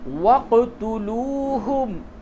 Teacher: قاف جب بھی ساکن ہو تو اس پہ قلقلہ ہوتا ہے، یعنی اس کے مخرج میں ٹکراؤ پیدا ہوتا ہے